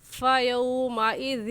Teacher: نرمی سے پڑھنے کا طریقہ یہ ہے کہ زبان کی نوک دونوں دانتوں کے درمیان میں لے کر آنے سے ذال نکلتا ہے